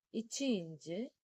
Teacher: நாவின் இடை அன்னத்தின் இடையை பொருந்துவதால் பிறக்கும்